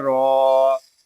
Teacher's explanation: را کے اوپر کھڑا زبر ہے، اس کو ہم ایک الف تک کھینچ کر پڑھیں گے